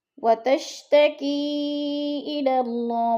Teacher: وتشتکی پہ مد منفصل ہے، 4 الف مد ہے، 4 حرکات کے برابر ہم نے اس کو کھینچ کر پڑھنا ہے